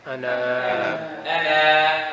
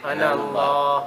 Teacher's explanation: You continue, you do not pronounce the alif.